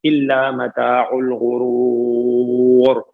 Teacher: الغرور میں واو مدہ ہے، اور پھر عارضی وقف کریں گے تو مد عارض سکون ہو جائے گا، 4 سے 6 حرکات ہو جائیں گی